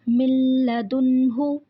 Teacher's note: دیکھیں نون ساکن کے بعد لام آ رہا ہے، ہم نے پڑھا تھا جب لام اور را آئیں گے تو وہاں ادغام بلا غنہ ہوگا، مطلب غنہ کے بغیر پڑھیں گے، اس کو ایز اٹ از پڑھیں گے، بس صرف لام کے اوپر جو شد ہے اس کے اوپر تھوڑا سا ہم اسٹریس اسی لیے دیتے ہیں کیونکہ شد 2 دفعہ پڑھا جاتا ہے